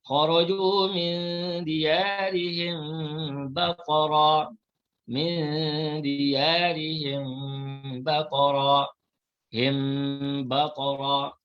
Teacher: Maka di sini mim mati bertemu ba, namanya ikhfa syafawi, dibaca dengan kita sembunyikan mim mati, kemudian kita dengungkan.